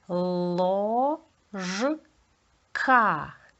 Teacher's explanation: Перший у нас твердий приголосний л далі О голосний ротик відкритий далі два приголосних ж к і